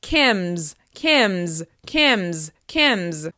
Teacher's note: When we add apostrophe S to my name, such as when we say Kim's video or Kim's on her way, we add the Z sound to the end.